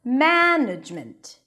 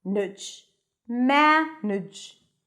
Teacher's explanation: Some are longer and more stressed, management. And some are shorter and reduced